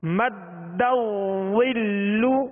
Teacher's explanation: دال مشدد ہے، دال کو اس میں جماؤ خوب جماؤ کے ساتھ ادا کریں گے